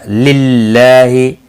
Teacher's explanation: اللہ کا لام باریک پڑھا جائے گا، زیر کی وجہ سے کھڑی زبر بھی ہے، ایک الف کے برابر کھینچ کر پڑھیں